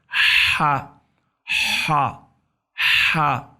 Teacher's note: ہا گلے کے درمیان سے، گلے میں کھنچاؤ پیدا ہوتا ہے، سرد ہوا کا اخراج ہوتا ہے. ہا ہا ہا جیسے ٹھنڈی سانس اٹھائی جائے اس طرح.